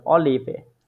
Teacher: ফে ফাও না, ওটা ফে হবে হ্যাঁ, না। মানে অনেকটা উচ্চারণটা ফে আর বে এর মাঝামাঝি